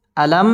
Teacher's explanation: মিম এই দুইটি হরফ ব্যতীত যদি অন্য কোন হরফ আসে তাহলে এই মিম সাকিনকে গুন্না ছাড়া পড়তে হবে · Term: ইজহারে খাস